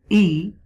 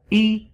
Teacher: The zair mean kasra, is pronounced by dropping the tone of the voice,